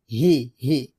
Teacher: এই হারটা আমরা হলকের শুরু থেকে পাতলা করে উচ্চারণ করব